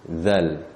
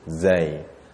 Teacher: Kedudukan lidah pun berbeza. Kalau zal tadi, dia berada di belakang gigi, zal. Tapi kalau zai, lidah kita berada di tengah-tengah langit, zai.